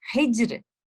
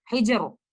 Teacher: आप इस letter रॉ को तफहीम के साथ नहीं तरकीक के साथ पढ़ेंगे। हिज्र, आप इसको ऐसे नहीं पढ़ेंगे, हिजर, तरकीक के साथ पढ़ेंगे।